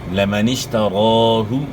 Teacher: را کو آپ نے کھینچنا ہے اور ایک الف کے مقدار کے برابر آپ نے کھینچنا ہے, اور را کو آپ نے موٹا ادا کرنا ہے